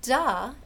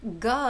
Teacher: duh is a voiced alveolar stop gaw is a voiced velar stop okay so you're changing the place of articulation you're becoming velar